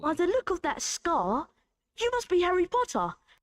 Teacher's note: They don't pronounce the R at the end of scar.